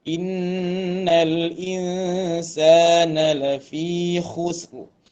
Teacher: Nun bertemu sin ikhfa hakiki ni ada gunnah